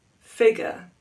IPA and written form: ˈfɪgjər (figure)